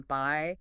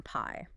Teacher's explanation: The B is voiced. Your vocal cords vibrate. The P is unvoiced and often has a little puff of air, aspiration.